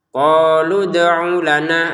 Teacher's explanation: lu-nya ini bertemu dengan sukunnya dal ya, maka panjangnya lu menjadi tidak ada.